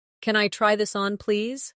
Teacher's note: Notice how try this on blends slightly. It makes your speech sound smoother.